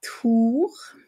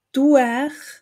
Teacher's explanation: ein U auf Hochdeutsch, das sehr oft zu einem UE im Schweizerdeutschen wird